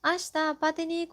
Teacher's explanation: said with the rising intonation to confirm the listeners agreement